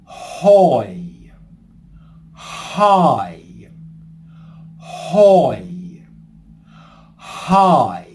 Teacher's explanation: what we're going to do is add an h sound to the beginning of both vowels. So, we're going to say hoy.